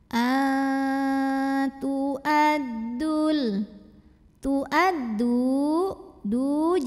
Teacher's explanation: dengungan ikhfa karena nun sukun menghadapi huruf ta maka cara membunyikannya nun sukun dibunyikan samar-samar siap-siap ke makhroj hurufta disertai bunyi dengungan karena huruf ta makhrojnya masih dekat dengan Nun maka dengungnya masih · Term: ikhfa Haqiqi